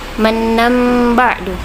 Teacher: Mannam ba'du, tandanya ada mim kecil di atas. Cara membaca iqlab yaitu tanwin atau huruf n-nya diganti menjadi mim atau m, jadi mingkem. Mannam ba'du, dan didengungkan.